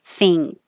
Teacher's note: you may not realize you are making an ing before the k it's thing with a k think run the vowel is uh